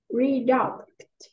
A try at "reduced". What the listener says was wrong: This one is reduced. Reduced. This one is, it sounds like it's like S, not reduc. This one is reduced. Reduced.